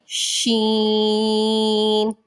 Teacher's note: شین کو تھوڑا لمبا کریں گے اور منہ میں سے سیٹی کی آواز نکالیں گے